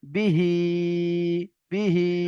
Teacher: বা জের বি, হা খাড়া জের হি, বিহি, বিহি, বাটা কোনো মতে টান দেওয়া যাবে না, হিটাকে টান করে পড়তে হবে